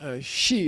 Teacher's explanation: But in the ancient language, she, high tone, with the lengthened she, it means the real nature of reality. Okay. It means the foundational nature of all existence.